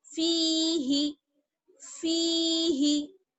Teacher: आगे है फी ही, फा या जेर फी, हाजिर ही, फी ही। हा को बिल्कुल नहीं खींचेंगे क्योंकि हा में या मद्दा नहीं है बल्कि फा में जुड़ी हुई है